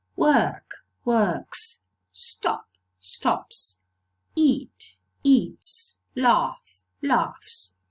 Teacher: so it's realized as voiceless sounds because the previous sound is a voiceless non sibilant sound